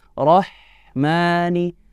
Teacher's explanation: huruf H yang di mana makhrajnya keluar dari tengah tenggorokan dan sifatnya dia memiliki yang namanya ilhams atau nafas yang harus